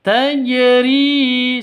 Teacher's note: ri panjang dua ketukan karena ada ya mati diawali dengan kasroh. Ya mati sebelumnya kasroh, mad asli atau mad tabi'i.